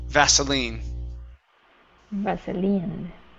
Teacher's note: Okay, so unvoiced S and then stress at the end.